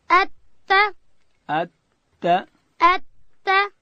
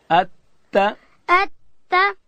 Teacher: او د تا اواز چې دی هغه نری دی